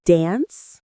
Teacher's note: the verb dance ends with the letter E, but the last sound is S, which is voiceless